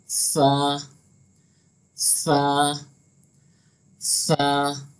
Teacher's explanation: सा जो होता है उसमें उसको एकदम बारीक पढ़ते हैं, उसमें ज़रा भी सीटी की आवाज़ नहीं निकलनी चाहिए